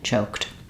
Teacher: you're going to burst out the air all at once choke it's a very like Light release of the K and then the stronger release of the tea